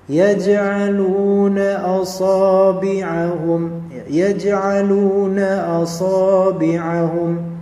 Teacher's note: lam di sini dhamma ketemu dengan waw mati, maka menjadi mad tabi'i dua harakat